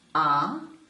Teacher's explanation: it is longer and it has a lower pitch so we call it the low tone